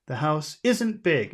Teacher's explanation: you barely hear the in part the house isn't big it's just a little n sound